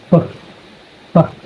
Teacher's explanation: Bilabial means it's made using both lips. And then the plosive means you block the airflow completely with your lips and then release it suddenly, creating a small burst of air. · So the P sound is called a voiceless bilabial plosive sound. Voiceless means just like the letter F, your vocal cords do not vibrate when you say it.